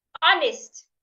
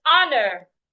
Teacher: the H is silent do not pronounce it · In the word hour, honest, and honor, the H should not be heard.